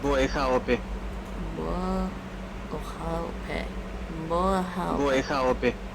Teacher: Gotta get that glottal stop in there again. Like in Hawaiian.